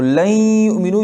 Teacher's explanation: لن یؤمنوا، لن یؤمنوا، تو لن یؤمنوا کو جب ہم پڑھتے ہیں مدغم کر کے تو لن یؤمنوا یا کو تشدید دے کر دونوں کو ملا کے غنہ کے ساتھ پڑھتے ہیں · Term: ادغام